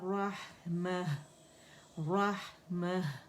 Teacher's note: राह क्यों ज़्यादा क्लियर होगा, इस वजह से कि साकिन है, इसमें रखावा भी है, ठीक है, और हम्स भी है, ठीक है। तो उसको हमने वाज़े करना है, ठीक है।